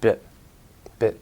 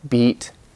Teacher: it's shorter in bit not only because it's just shorter but the tongue muscle is relaxed and it's actually a completely different vowel sound they're completely different